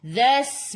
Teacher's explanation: Dzas masuk ke dalam sin, sin ada sukun. Sin sifat hurufnya safir kena bunyikan.